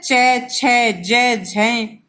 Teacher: च वर्ग में जो ये वर्ण आते हैं, इनका उच्चारण तालु से होता है